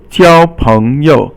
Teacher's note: 交 is first tone, 朋 is second tone, and then this 友 usually is fourth tone, but here it just becomes 轻 声 or silent